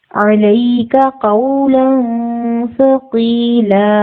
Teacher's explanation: عین کی آواز کو ہم واضح کریں گے تاکہ حمزہ کی آواز نہ لگے